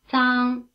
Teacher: 容 The consonants in the last row of display 2, written Z and C, may be described as being in the dental position. They are pronounced with the front of the tongue first touching just behind the upper teeth, in the position for T, and then moving slightly away in the position for S.